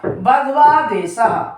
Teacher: दूसरा उदाहरण मैं बताती हूँ, बधु प्लस आदेशा, बधवादेशा, बधु उ प्लस आ और यहां मिलके वा बन गया, तो उ प्लस आ बराबर उ को हम यहाँ पर जब उच्चारित उ और आ को एक साथ करते हैं तो हमारे मुंह से अपने आप ही वा वर्ण निकलता है